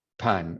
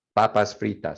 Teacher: you limit that air coming out and that p sound sounds more native so papas freitas so you hold your hand in front of